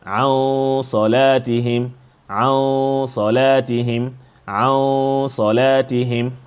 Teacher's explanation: the ghunna will take some of the characteristics of the heavy letter here whenever there is ghunna involved.